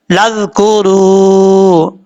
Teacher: واو مدہ ایک الف کی مقدار لمبا کر کے پڑھیں گے